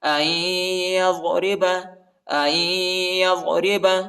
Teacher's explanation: نون کو نہیں پڑھنا ہے کیونکہ یا پر جو ہے شد آیا ہے، اس کو شدت کے ساتھ پڑھنا ہے اور غنہ بھی کرنا ہے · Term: ادغام